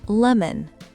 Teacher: Le « o » disparaît presque.